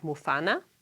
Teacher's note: The syllable mu- is normally low toned, but when it is preceded by a high tone on the preceding í it becomes high toned. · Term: high tone spread